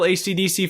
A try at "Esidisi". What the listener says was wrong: I just pronounce it ECDC because it's E. It's ESIDISI.